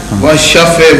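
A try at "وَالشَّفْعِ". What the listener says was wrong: Washafe wal watr. Washafe. Washafe, not wal shafe.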